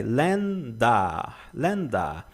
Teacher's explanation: Länder é um A aberto, tá? Você quase não percebe a letra R.